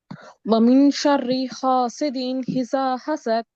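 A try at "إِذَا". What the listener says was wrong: اذا نہیں، اذا حمزہ، حمزہ زیر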